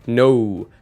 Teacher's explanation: you don't just make an O sound, but you tuck a little oo sound onto the end. You can verify this by noticing that your lips and tongue actually move, which would be unnecessary for just one simple vowel sound. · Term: gliding vowels